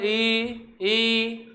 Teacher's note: ई का उच्चारण क्या होगा, दांतों के जस्ट ऊपर वाला हिस्सा जहाँ चिकनापन है वहाँ पे जीभ आपकी टकराएगी। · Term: तालु